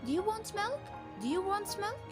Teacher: we use rising intonation because it's yes no question